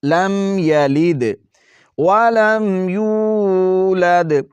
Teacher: یہاں پر میم کو ظاہر کرنا ہے، غنہ بالکل نہیں کرنا۔ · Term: میم ظاہر